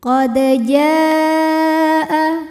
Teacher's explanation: Lalu berikutnya ada hukum qalqalah sugro. Sebab huruf qalqalah ini sukunnya sukun asli dan ada di tengah bacaan, maka dibacanya memantul dengan pantulan yang kecil